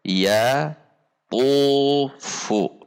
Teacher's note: Fu-nya istifal, tu-nya tegang, ya-nya istifal. · Jika ta berbunyi yatufu, jika to berbunyi yatufu. Ada tegang pangkal lidah atau isti'la dari huruf to. Jangan sampai dibaca yatufu, yatufu, tetapi yatufu.